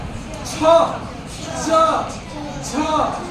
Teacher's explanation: तो जब च बोलेंगे ना तो देखना ये जीभ जाएगा और तालू पर ऐसे टच करके और आवाज को बाहर फेंक देगा। इसने मुंह खुला के खुला नहीं रहेगा।